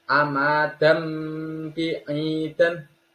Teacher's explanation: Tanwin bertemu ba dibaca dengung, satu alif atau 2 harokat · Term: iglab